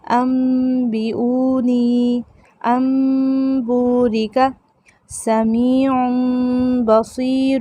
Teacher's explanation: نون کی آواز کو میم سے بدل دیا